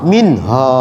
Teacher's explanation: Yang satu bacanya betul, ditanya mengapa baca begitu, oh ini izhar, nun mati berjumpa dengan ha, minha, minnya tak berdengung tuh karena izhar